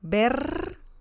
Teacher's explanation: the first R sound is very strong and the second one is a little softer